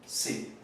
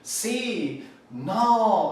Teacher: ese signo de admiración nos lleva a tener ese sonido glotálico, que no somos conscientes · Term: oclusiva glotal